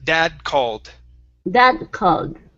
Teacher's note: Now that's the stop D sound. So we don't finish that D.